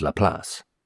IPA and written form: ləˈplɑːs (Laplace)